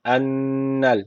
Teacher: şeddeli nun var. Mutlaka bir elif tutuyoruz.